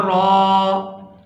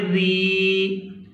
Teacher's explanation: را اگر زبر کے ساتھ آئے یا پھر پیش کے ساتھ آئے تو اس کو پورا ادا کیا جاتا ہے، اور اگر را زیر کے ساتھ آئے تو پھر اس کو باریک ادا کیا جاتا ہے